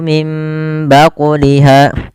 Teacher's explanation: Kembali lagi di lafal mim baquliha ada nun mati bertemu ba, maka hukumnya sama, yaitu dengan tumbitu, yaitu iqlab. Cara membacanya mengganti suara nunnya menjadi suara mim dan ditahan. Kemudian pada lafal baquliha ada bacaan qalqalah pada lafal huruf qaf yang disukunkan.